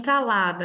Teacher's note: Em calada, a sílaba tônica é o lá, e a palavra é paroxítona